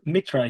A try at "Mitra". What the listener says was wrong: No, you don't have to pronounce the H. It's Mitra.